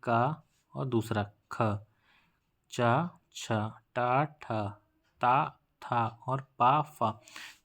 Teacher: प्रत्येक वर्ग का पहला अक्षर और दूसरा अक्षर, ये आघोष व्यंजन होते हैं